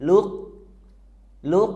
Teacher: kita baca dulu qf sukunnya tanpa Qalqalah atau dipantulkan